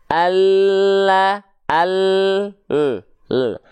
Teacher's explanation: lam itu keluar dari tepi lidah kita alias samping lidah kita tapi bukan seluruh samping lidah hanya samping lidah bagian depan yang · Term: huruf lam